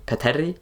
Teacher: In the circumstances where I mutation did trigger, A became fronted to E.